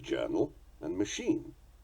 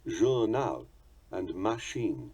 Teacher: The French give them their characteristic equal stress, journal and machine.